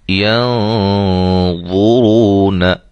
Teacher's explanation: ضا اور را یہ دونوں موٹے ہیں، ہم ان دونوں کو موٹا پڑھیں گے۔ موٹا، اخفا بھی موٹا ہے۔